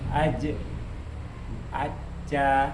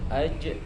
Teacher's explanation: Ketika tasdid dia suaranya terputus. Nah kalau sukun baru dia mantul.